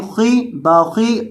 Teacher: خا کو موٹا کریں گے کیونکہ خا ہمیشہ موٹا کر کے پڑھا جاتا ہے اور یہ موٹے حروف میں سے ہے۔